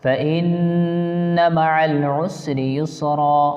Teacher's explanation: नून पे तशदीद है, यहाँ गुन्ना करके पढ़ेंगे 1 अलिफ के बराबर